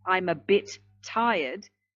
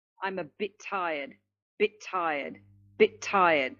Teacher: That is when you have the the word the first word ends in a consonant sound and the following word begins with the same consonant sound. We aren't going to produce two sounds, two of the same sounds. We will only produce one. So again, we're going to link the two words together and only have one consonant sound. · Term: sound twinning